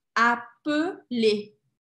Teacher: Lembra que eu falei que duas consoantes vai fazer com que eu abra o som da vogal anterior? Então, se tem um L só, o som é fechado.